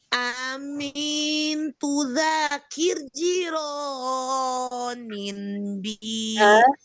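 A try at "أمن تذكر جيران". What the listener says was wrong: Amin tazakuri jironim, bukan kir.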